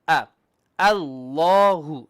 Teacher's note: The lam is heavy, but the alif is flat.